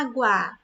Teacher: esse primeiro A, ele não é tônico? Não é a sílaba mais forte? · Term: A tônico